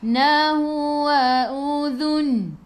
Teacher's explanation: Hujung lidah keluar pada gigi depan. Matikan dengan huruf nun. Hujung lidah menyentuh gusi atas.